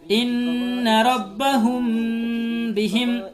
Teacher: اخفاء شفوی دوسرا نمبر قاعدہ ہے، اخفاء شفوی میم ساکن کے بعد اگر با آ رہا ہے تو وہاں پر غنہ کر کے پڑھیں گے، میم ساکن کی آواز کو ناک میں چھپا کر غنہ کے ساتھ پڑھیں گے